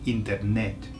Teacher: all the emphasis is on the end, the last E